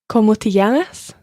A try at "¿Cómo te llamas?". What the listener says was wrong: Muy bien.